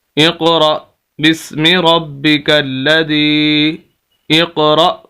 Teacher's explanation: را کے آگے حمزہ ہے، اس وجہ سے یہاں پر جھٹکا دے کے پڑھنا ہے، اور اسے حمزہ کہیں گے، الف نہیں کہیں گے۔